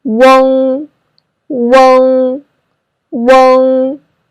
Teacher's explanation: the first vowel is wu, so remember to put your mouth rounder when you pronounce it.